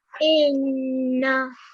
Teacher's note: So it's actually not the fatha that needs to be prolonged. It's actually just the Noon Mushaddad, the Noon sound that's prolonged for 2 seconds. So it's in very short on the fatha because it's just 1 second.